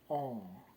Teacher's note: it says like an open mid back rounded vowel but it's nasalized